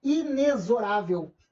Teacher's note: Essa palavra não tem o X com som do KS, o XI. Não é pela norma culta. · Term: X com som de Z